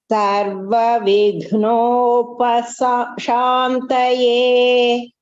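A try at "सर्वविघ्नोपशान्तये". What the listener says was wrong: Bhagini, you are not going to split the word of Vignopashantaye. You have to say completely. Sarva Vignopashantaye.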